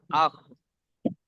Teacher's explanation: হালাক বা কণ্ঠনালীর শেষ ভাগ হতে উচ্চারিত হয় গইন খ